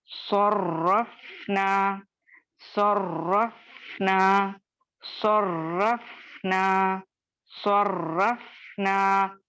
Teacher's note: और फा जो है लाइट लेटर है, लेकिन यहाँ पे साकिन होने की लेटर है तो अल्हम्दुलिल्लाह इसको उसी तरीके से अदा करेंगे। सौद मोटा है तो सौद मोटा है, सौद को मोटा पढ़ेंगे। रॉ यहाँ पे मुखफ़्फ़म पढ़ा जाएगा क्योंकि जबर है।